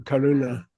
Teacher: With a retroflex N.